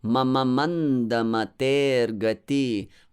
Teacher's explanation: the first word mama both are short and both are actually light syllables